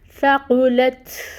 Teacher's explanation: تا جو ہے یہ بھی باریک حروف میں آتا ہے، اور یہاں پر یہ ساکن ہے، تو یہاں پر اس کی جو صفت ہے وہ ہے کہ اس کے اندر ہمس پائی جاتی ہے، وہ ہمس ہم نے کلیئر کرنی ہے، وہ ساؤنڈ سننی چاہیے۔